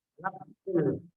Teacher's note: Fa-nya sukun, maka di sini berhubung fa adalah huruf hamad, maka dia mesti mengeluarkan yang namanya hamad atau desir. Nafsul, ada hawa yang keluar